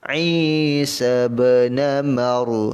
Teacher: Namar, ra ni tebal, mar, ra tebal sebab ra yang mati sebelumnya ada huruf mim yang berbaris atas, maka kekuatan ra ini dia akan jadi tebal.